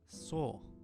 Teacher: the end of the word so gets a change where it sounds much flatter, almost like an or